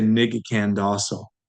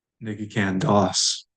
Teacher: We delete the short O because it's a VAI and you or I are doing it, and it ends in a short vowel, aka, the short O.